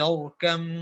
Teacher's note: جی پور پڑھیں گے، را ساکنہ ہے ما قبل فتحہ ہے